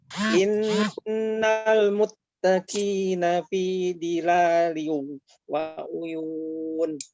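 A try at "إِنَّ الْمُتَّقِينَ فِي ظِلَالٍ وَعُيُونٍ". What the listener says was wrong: Baik, huruf dha. Dha ditebalkan sedikit lagi, Pak. Fi dhi. Fi dhi. Lihat mulutnya.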